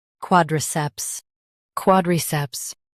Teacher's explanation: Stress quad and keep ceps clear.